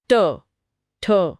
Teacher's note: जीभ का अगला हिस्सा मुड़ रहा है। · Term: मूर्धन्य